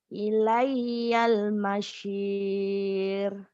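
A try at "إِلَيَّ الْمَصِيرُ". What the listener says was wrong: ilayyal mausir. Sodnya jangan kebanyakan angin. Ilayyal mausir. Sod. Ilayyal mausir.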